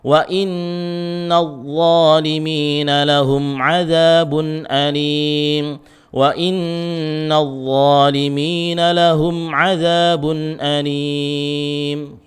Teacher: Terakhir huruf dha, itu juga tebal, ya, pangkal lidahnya dinaikkan. Kalau tidak dinaikkan pangkal lidahnya, dha itu zal